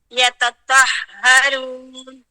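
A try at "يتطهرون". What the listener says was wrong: طہ, اچھا تا نہیں, ہاں اب اگر آپ دیکھیں نا تو مخارج جو ہے نا تو تا کا اور تو کا سیم ہے, لیکن تو کی آواز ہم موٹی کیوں نکالتے ہیں؟ چلے مجھے بتاؤ گے سب, یہ کیوں نکالتے ہیں ہم موٹی؟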